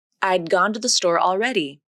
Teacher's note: the tongue tip comes up to the alveolar ridge to make the D consonant and then it stays there - there isn't a release. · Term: unreleased D consonant